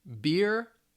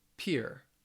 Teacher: the only real difference one's voiced one's a voiceless sound